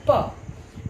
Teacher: when p is articulated, the vocal cords are not in vibrating position. They are wide apart, and the air from the lungs flows through that passage. That is to say, between the two vocal cords. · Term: voiceless sound